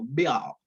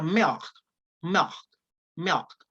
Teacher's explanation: Ya no se escucha como una L propiamente dicha, sino que se tiende a escuchar como una W.